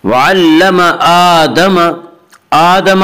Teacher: वअल्लम आदम हमजा के ऊपर खड़ा ज़बर है, खड़ा ज़बर को एक अलिफ के बराबर खींच कर पढ़ेंगे